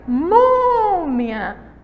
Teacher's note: A segunda palavrinha, a segunda sílaba aí, a penúltima sílaba, ela é forte.